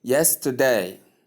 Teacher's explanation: So stress is placed on the first syllable